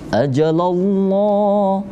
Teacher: Karena bukan kasrah huruf ajalnya itu ya. Maka lam jalalahnya dibaca tebal.